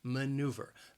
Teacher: maneuver has three syllables and the stress is on that second syllable